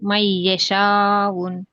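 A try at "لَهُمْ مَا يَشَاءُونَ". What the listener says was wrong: మై కాదమ్మా, ఇక్కడ లహుం. లహుం మీమ్ ఫతాలిఫ్ మా యషావున, ఇది మద్దల్ వాజిబ్ ముత్తసిల్.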